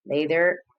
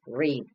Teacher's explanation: d, which is voiced. The place of articulation is alveolar.